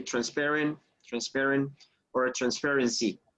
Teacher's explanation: the stress goes on the second syllable